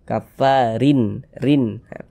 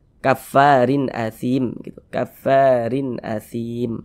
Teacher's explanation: maka hukumnya adalah izhar halqi karena dia izhar maka dibaca jelas tak berdengung